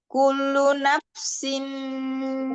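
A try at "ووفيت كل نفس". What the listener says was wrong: Kalau itu terlepas ya, kulunya. Kullu nafsim itu terlepas. Tapi yang pertama tadi kullu ketahan. Jadi jangan ketahan, jangan terlepas. Jadi wuffiyat kullu nafsim. Ringan aja, Mi. Kullu nafsim. biasa. biasa ya, tidak dibuat-buat. Maksudnya tidak terlalu tekan. Tapi jangan dilepas, jangan loncat. Kalau dia terlalu dilepas, temponya berubah.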